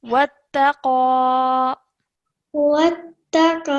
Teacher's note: And then over here, when you're joining, remember this has a shadda, so join the waw to the ta with force and then apply the fathah